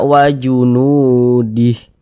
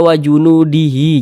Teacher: Jangan dibaca wa junudihi, jangan. Dia tidak dibaca panjang, gugur panjangnya nih gugur. Jadi mad silah qasirahnya gugur. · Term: mad silah qasirahnya itu gugur